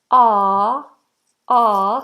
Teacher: tongue is flat the placement is back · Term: open vowel